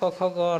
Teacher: ये कंठ से बोला जाता है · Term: कवर्ग